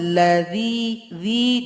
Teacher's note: Huruf dzanya ujung lidah dengan ujung gigi